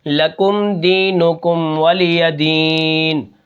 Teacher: نون کے نیچے زیر ہے، لکم دینکم ولی دین، ٹھیک ہے۔ یہاں پر میں نے سکون کیا آخر میں نے زیر کو نہیں پڑھا ، وہ اس لیے ہے کہ یہاں پر وقف بالاسکان ہے۔